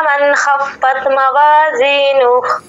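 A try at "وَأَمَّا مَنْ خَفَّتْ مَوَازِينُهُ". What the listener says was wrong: ये ता के ऊपर फिर कलकला हो गया आपसे।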